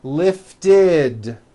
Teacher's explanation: we add the ending id, which is a vowel I, followed by a D, which is voiced.